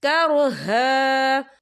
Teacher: وقف کی صورت میں ایک زبر پڑھا جائے گا، 2 زبر نہیں پڑھے جائیں گے.